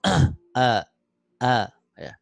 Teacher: hamzahnya lebih ditegaskan ya di tenggorokan bawah